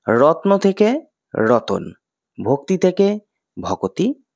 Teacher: দুটি ব্যঞ্জন এর মধ্যে একটি করে স্বরবর্ণের আগমন হয়েছে যেমন রত্ন শব্দটিতে তয় বই এই যুক্ত ব্যঞ্জনের মধ্যে অ স্বরধ্বনির · যুক্ত ব্যঞ্জনের মধ্যে অ স্বরধ্বনির আগম ঘটায় শব্দটির উচ্চারণ সহজ হয়ে রতন হয়েছে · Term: বিপ্রকর্ষ